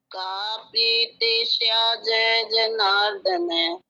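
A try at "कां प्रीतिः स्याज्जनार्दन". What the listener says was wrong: शाह जय जय जनार्दन ऐसे नहीं बोलना है, ये जय आधा और बड़ा जय दोनों मिले हुए हैं, तो इसलिए ऐसे बोलिए, शाह जनार्दन, बोलिए। हाँ ठीक है, इसको और सुधार लें, तो शाह जनार्दन, जय 2 है ना।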